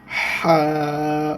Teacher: উচ্চারণটা ভালো করে খেয়াল করেন একদম গলার মধ্য থেকে